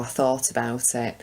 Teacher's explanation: she's using the T there at the end of 'thought' and 'about', I think because each following word begins with a vowel sound